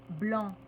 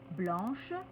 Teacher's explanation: quand on a un adjectif qui se termine par C, C qui ne se prononce pas, le C va devenir che. On va simplement ajouter le H, mais avec une prononciation particulière, che.